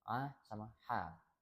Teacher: Lalu ada ain sama ha, itu ada di tengah tenggorokan.